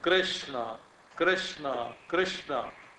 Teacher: श और ण दोनों मूर्धन्य है